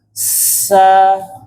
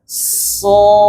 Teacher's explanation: Kalau sin itu pangkal lidahnya turun sehingga suaranya tipis. Kalau sod itu pangkal lidahnya naik sehingga suaranya menjadi tebal.